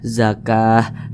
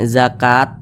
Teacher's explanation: kalau misalkan kita berhenti pada huruf Ta marbutah Maka huruf Ta marbutah ini dirubah menjadi huruf H zakah jangan zakat jangan salah tapi zakah menjadi huruf H Nah